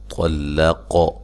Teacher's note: طا کو موٹا، لام کو باریک، قاف کو بھی موٹا ادا کرنا ہے اور ساتھ قلقلہ بھی کرنا ہے۔